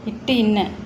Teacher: நாவின் நுனி அன்னத்தின் நுனியை பொருந்துவதால் பிறக்கும் எழுத்துக்கள் டேஸ், ஆன்சர் வந்து இ இட்டு இன்னு.